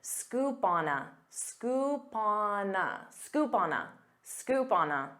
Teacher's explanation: instead of saying scoop on a with pauses you can pronounce this as one word